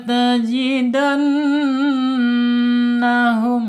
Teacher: Ketika ada nun bertasjid maka harus dibaca gunah ya. Gunah ditahan dua sampai tiga harakat.